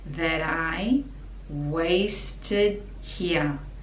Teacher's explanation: So that I, connecting these two words together, so the T is like a D.